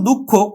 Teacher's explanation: দুঃখ খ টা দুইবার উচ্চারিত হওয়ার কথা ছিল কিন্তু খ টা দুইবার উচ্চারিত হলো না তার কারণ হলো যে খ হচ্ছে কিন্তু মহাপ্রাণ বর্ণ খ হলো